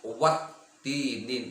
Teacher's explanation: Dalam kurung alif lam tidak dibaca. Wattini, dari wa langsung ke ta. Jadi alif lamnya tidak dibaca. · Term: alif lam syamsiyah